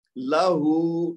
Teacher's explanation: ठीक है, फिर आखिरी मिसाल देखिए, लहू, लाम को लंबा नहीं करेंगे क्योंकि उसके ऊपर जबर है, और हा को लंबा करेंगे क्योंकि उसके ऊपर उल्टा पेश है जो कि वाव मद का बदल है, तो लहू दो हरकत देंगे हा को।